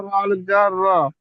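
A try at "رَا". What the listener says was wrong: তাহলে আমি বলছি এখানে র আলিফ জবর র, টান হবে, কিন্তু আপনি টান দিচ্ছেন না কেন? টান দেন।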